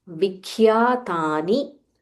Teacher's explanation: there is a half kha, mahaprana kha